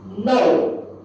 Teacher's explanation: it's a falling tone and very short and heavy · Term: 4th tone